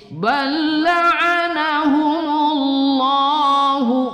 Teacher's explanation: Allah lamul jalalah kita baca tebal tafkhim, kemudian lohnya kita baca satu alif dua harakat.